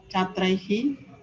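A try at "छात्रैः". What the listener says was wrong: Chatraihi, correct.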